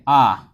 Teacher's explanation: आ जो मुख आपका पूरा खुल जाता है